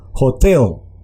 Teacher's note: la H tiene un sonido de J y se hace énfasis o entonación en la segunda sílaba